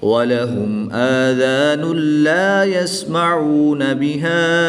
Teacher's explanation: دو پیش کی تنوین کے بعد لام حروف یرملون میں سے آ گیا تو یہاں پر بھی ادغام بلا غنہ ہوگا، غنہ نہیں کریں گے